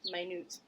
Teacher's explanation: with the long vowel I, stress on the second syllable, and a long U sound